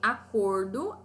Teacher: acordo é uma palavrinha que eu sinto mais forte o cor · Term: paroxítona